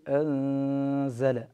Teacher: نبقي الغنة في النون هنا ونحذر من تشديد الزاي بعد النون الساكنة · النون ساكنة قبل حرف الزاي تخفى أيضا، فنخفي هذه النون قبل حرف الزاي فنقول أنزل، ولكن نحذر كل الحذر من تشديد الحرف المخفى فيه. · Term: الإخفاء